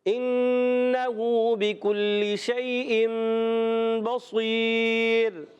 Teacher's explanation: نون سائن تنوین کو میم سے بدل کر اخفا کر کے پڑھیں گے. اقلاب کرتے ہیں، بدل دیتے ہیں.